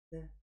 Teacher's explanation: Согласный, глухой парный, мягкий парный.